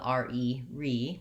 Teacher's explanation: we have a secondary stress on that first syllable the re re because it makes it have a clear vowel